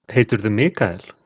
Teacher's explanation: Notice that the subject þú becomes voiced ðú and is suffix to the verb in writing.